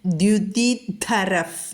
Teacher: വിസർഗശേഷം പാ വന്നാൽ അവിടെ നമ്മൾ വിസർഗസ്ഥാനത്ത് ഫ എന്ന് ഉച്ചരിക്കണം. ദ്യുതിധരഫ് എന്ന് പറയണം.